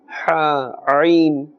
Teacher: These 2 letters, their sound must emanate from the center of the throat.